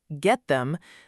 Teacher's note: the th can blend closely with the t before it, so it sounds smooth and connected, almost like one word said quickly